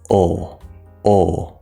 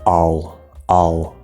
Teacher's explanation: the half L you don't touch the top it's more like you pull your tongue back inside the mouth